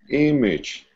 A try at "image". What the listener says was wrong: I know it's spelled with an A, but we don't pronounce the A. The A for us is not stressed. When it's not stressed, it's pronounced image.